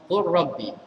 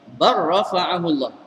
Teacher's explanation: Lam tak bunyi sebab masuk kamil, masuk sepenuhnya dalam ra.